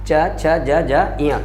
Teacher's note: च, छ, ज, झ, इया कहाँ से बोले जाते हैं, तालु से बोले जाते हैं